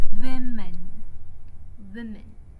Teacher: the stress is on the first syllable, which is Wim. In the sound wave, the first syllable shows a taller, stronger waveform, while the second syllable appears weaker and shorter.